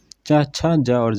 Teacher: ये स्पर्श संघर्षी ध्वनियाँ होती हैं, क्योंकि ये तालु से बोले जाते हैं, तालव्य स्पर्शी भी बोल सकते हैं।